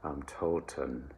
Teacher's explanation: It is not toten, as if it were Latin, Italian, or Spanish. It is German, so it is a schwa neutral kind of sound.